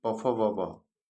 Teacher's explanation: प फ ब भ, इसका उच्चारण स्थान ओष्ठ हो जाएगा।